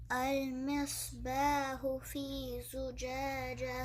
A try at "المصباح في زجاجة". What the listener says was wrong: یہ ہا کو کلیئر کرنا ہے, اس کو ہو نہیں کہنا. المصباح فی زجاجہ. مصباح فی زجاجہ.